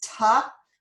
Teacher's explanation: sometimes the oo sound in to becomes so that the word to becomes ta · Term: reduced form